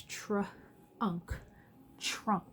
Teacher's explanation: TR is a little tricky because it says tra, and you kind of hear that CH, but there's not a CH